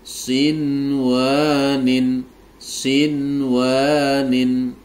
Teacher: nun sukun bertemu dengan wau dalam satu kata cara membacanya wajib dibaca jelas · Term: izhar wajib